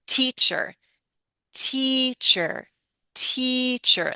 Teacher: Lengthen the vowel. Your voice can go up a little, and it can also become a little louder. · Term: stressed vowels